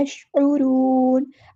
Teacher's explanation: वलाकिल्ला यशउरून, यशउरून नहीं करना, शीन को हिलाना नहीं है, यशउरून, आइन को मुस्तहलक से अदा करना है, यानी मिडल थ्रोट से अदा करना है , रा पूरा अदा होगा यहाँ पे और वाव मद्दा आ